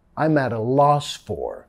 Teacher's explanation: Nota acá cuando lo decimos rápidamente, no vamos a decir I'm at a más I'm at a. I'm at a, vinculando con la R suave de español